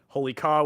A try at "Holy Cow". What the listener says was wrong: It's definitely pronounced Holy Cow. I know that's a dumb name, and phonetically it should be Caw, but it's definitely Holy Cow.